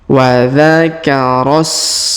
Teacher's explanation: Jadi bukan huruf ro bukan dibaca 2 harokat ya, tapi huruf ro langsung sambung ke huruf sa yang sukun. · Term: hamzah wasol